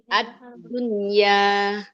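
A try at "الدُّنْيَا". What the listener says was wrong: Masih ad. Kayak mau ketak ya jadinya. Ad. Kayak mau ke huruf tak ya. Ad-dun. Tapi nggak boleh dipantulkan Ibu. Ad-dunya.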